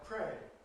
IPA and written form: ˈpreɪɪŋ (praying)